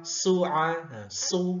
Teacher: Dia bukan huruf shin ya. Sad itu mirip kayak huruf sin yang sa biasa, tapi lebih tebal. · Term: huruf sad